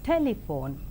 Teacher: in the 3-syllabled word telephone, the first syllable is more prominent